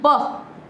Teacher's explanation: देखो दोनों होठे जो हमारे दोनों टकरा रहे ना आपस में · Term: ओष्ठ